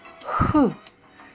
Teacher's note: спинка язика вигнута крутою гіркою до піднебіння та утворює щілину з ним при проходженні струменння повітря видиху через цю щілину утворюється шум звук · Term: звук х